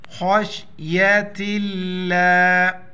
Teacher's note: لفظ اللہ سے پہلے زیر ہے اس کو موٹا نہیں پڑھیں گے